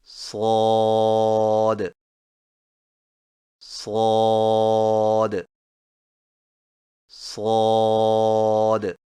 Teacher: صاد کی ادائیگی میں زبان کی نوک کو سامنے والے نیچے کے دو دانتوں کے کناروں سے مضبوطی سے لگا کر اور زبان کے پچھلے حصے کو تالو کی طرف بلند کرتے ہوئے موٹی اور سیٹی جیسی آواز میں پڑھیں